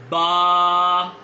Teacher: बा जो है वो अदा होता है दोनों होठों को आपस में जब आप मिलाएंगे तो बा अदा होगा